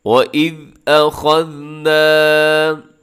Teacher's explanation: نا کو تھوڑا سا لمبا کیجیے گا کیونکہ اس میں الف ہے نون کے ساتھ، تو آپ نے اس کو لمبا کرنا ہے